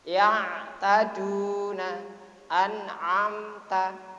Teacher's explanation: ain tersebut termasuk huruf halqi, huruf yang keluar dari tenggorokan. Harus ain a.